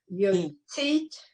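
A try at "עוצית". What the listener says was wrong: No, this is not a yud, this is an ayin. And an ayin is silent, so you just hear the vowel.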